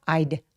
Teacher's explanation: 이 D는 디귿 받침이 있을락 말락 하는 듯